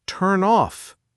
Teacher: So instead of saying turn off with a pause in between, a native speaker will say turn off. The N sound attaches itself to the O. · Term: linking